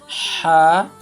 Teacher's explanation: huruf ha makhrajnya itu di tenggorokan bagian tengah